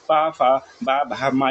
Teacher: ओठ से आपका प्रोनंसिएशन होता है। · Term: प वर्ग